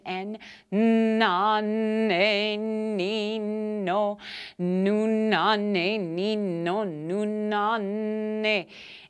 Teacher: feel the vibration in your upper chambers of your sinuses and feel the vibrations in your body in your lungs in